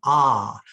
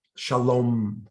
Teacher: Because ah is an open sound. It's an open syllable. There's no closure to it. It's expansive.